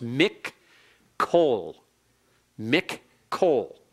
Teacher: The noon is assimilated into the following letter, which is the kaf, and in compensation of the assimilation, in other words, because the noon has disappeared, it's been assimilated, then that letter is doubled in compensation to compensate for it. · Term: doubled kaf